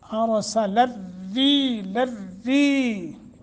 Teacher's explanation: اس را کو باریک پڑھیں گے